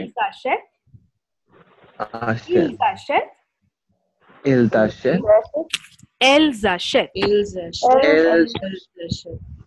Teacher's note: For the last one, you have to give the S sound because Ashet begins with a vowel there.